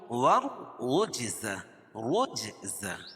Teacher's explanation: جیم پر قلقلہ ہے اور را کو پر پڑھیں گے. قاعدہ ہے کہ رائے مشددہ کے اوپر زبر یا پیش ہو تو را کو پر پڑھیں گے، اور جیم کے اوپر جزم ہے اور یہ حروف قلقلہ کے 5 حرفوں میں سے ہے.